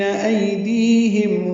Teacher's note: میم ساکن کے بعد با آنے کی وجہ سے اخفاء شفوی ہے